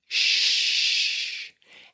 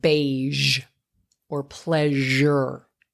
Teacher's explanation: And that's what we would call a voiceless sound, shh, shh, shh. But if I turned on my voice, right, and made it vocal, then that's a zh sound, like in the word beige or pleasure.